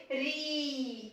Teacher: जब हम री का उच्चारण करते हैं तो ये अपनी मूल ध्वनि को छोड़कर अंत में ई की आवाज आती रहती है